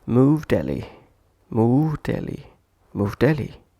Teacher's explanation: consonant-consonant connection of words where we omit sounds ed and t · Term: Omitted ed